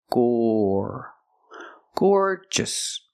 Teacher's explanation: the first syllable is the long or sound, like floor and more